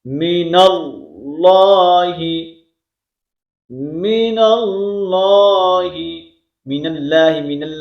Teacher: لفظ اللہ کا جو لام ہے اس کو ہم پر کریں گے، کیوں؟ وہاں قبل زبر موجود ہے